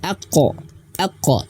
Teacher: Huruf qaf dia memiliki sifat qalqalah ya, qalqalah yaitu pantulan, aqqa, dan juga perlu diketahui huruf qaf itu dia memiliki sifat tebal, tafkhim, ataupun juga bisa disebut dalam sifatul hurufnya isti'la, tebal, terangkatnya pangkal lidah.